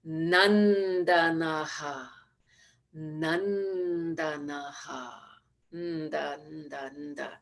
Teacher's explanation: the nasal sound with the tongue at the teeth